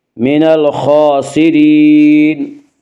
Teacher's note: را کے نیچے زیر ہے اس لیے را کو باریک پڑھیں گے